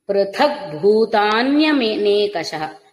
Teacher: పృథక్ భూత అన్నప్పుడు మహాప్రాణ భకారం